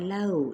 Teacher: لو پہ واو لین کا قاعدہ، لو، اس طریقے سے نرمی کے ساتھ ادائیگی